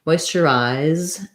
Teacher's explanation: We go from the R sound into an I diphthong. So thinking about that as I, or the same as the E-Y-E-I, moisturize, and then we have another unstressed at the end, moisturizer.